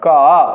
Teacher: जब आप क बोलिएगा तो क के लास्ट में दोस्तों कहीं ना कहीं आप लोगों को अ सुनने को मिलेगा।